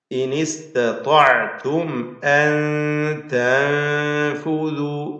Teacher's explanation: സാക്കിന നൂൻ രണ്ടെണ്ണം വന്നു, രണ്ടും ഇഖ്ഫാ ചെയ്ത് അവ്യക്തമാക്കി മണിക്കുക.